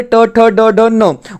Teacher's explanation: उसके बाद पांचवा जो होता है वो अनुनासिका होता है। पांच मूर्धा से बोलने वाले ट, ठ, ड, ड, न